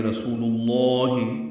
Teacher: رسول اللہ میں را پر پڑھیں گے، سو و مدہ ہے، لام کو لام اسم جلالہ سے ملا دیں گے